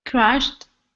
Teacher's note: it's with a t but it wasn't very strong at the end